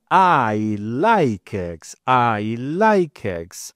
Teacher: If I say I like eggs, it means I am stressing the verb like. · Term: sentence stress